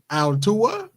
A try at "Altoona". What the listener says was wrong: No, nigga, I just said O-O-N-A, not U-N-A, O-O-N-A.